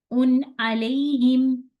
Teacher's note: नून है ना बीच में उन्ना की भी थोड़ी सी साउंड है। लेकिन इसको मैंने यहां पे इसको ज्यादा खींचना नहीं है। सिर्फ इसका ये फर्क आएगा। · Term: इजहार